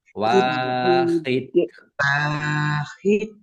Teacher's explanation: Tampakkan pantulannya dan pendek, ya, karena tidak ada tanda panjangnya. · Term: kolkolah